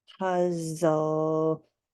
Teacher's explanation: l and an e at the end of a word and our tongue goes up to the roof of our mouth and the only thing we hear is the L